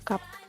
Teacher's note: Huruf a dalam bahasa Indonesia tapi panjang harokatnya satu saja terus-menerus bunyinya juga murni a enggak tidak digabung sama bunyi lain